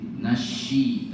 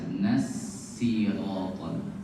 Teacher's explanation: Jangan pakai syin nasyi tapi pakai s biasa nasiraton